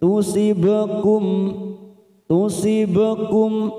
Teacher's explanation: bak sukun qalqalah sugro, kita pantulkan karena mati di tengah kalimat